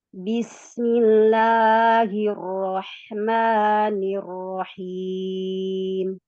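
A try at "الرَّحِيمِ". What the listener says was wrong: Ar-Rahim. Sempurnakan harokat fathah ra-nya. Ar-Rahim.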